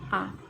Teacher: मध्य स्वर उदासीन होता है जो जीभ के मध्य हिस्से से उच्चारित होता है।